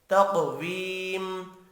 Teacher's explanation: تقویم، قاف ساکن ہے، قلقلہ کریں گے، حروف مستعلیہ ہے، پر بھی پڑھنا ہے۔